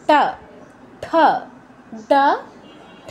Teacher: জিহ্বাকে মূর্ধায় স্পর্শ করাতে হয়। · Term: মূর্ধন্য বর্ণ